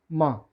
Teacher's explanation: इसी तरह से नासिका और दंत के साथ में बोला जाएगा न। इसी तरह से नासिका और ओठ के सहयोग से बोला जाएगा म